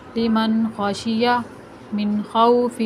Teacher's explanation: میں نے کسی بھی نون کے اوپر غنہ نہیں کیا بلکہ سارے نون کو ظاہر کر کے بغیر غنہ کے پڑھا ہے